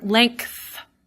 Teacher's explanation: you can probably hear me have something, say a K in there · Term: insertion